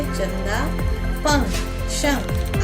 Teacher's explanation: इसका उच्चारण नाक से होता है। ये न या म के समान होता है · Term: अनुस्वार